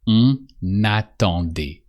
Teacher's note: you have to pronounce the N of on only when just after there's a vowel, when the following word starts with a vowel.